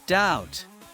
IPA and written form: daʊt (doubt)